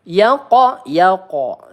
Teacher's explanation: qalqalah sugro kita pantulkan ya